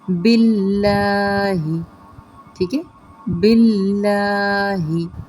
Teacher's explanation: اس میں جلالہ پر نہیں کرنا بلکہ باریک کرنا ہے